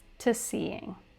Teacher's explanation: the word to is often pronounced ta in rapid speech